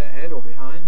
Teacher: it does sometimes sort of get voiced between vowels when people say ahead or behind. You can get the voicing going straight through. So in that respect, it behaves like a sonorant.